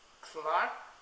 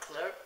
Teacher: the word clerk is pronounced Clark in British English but cler in American English